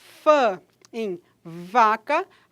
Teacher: a gente tem que o lábio inferior tocam os dentes incisivos superiores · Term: lábio dental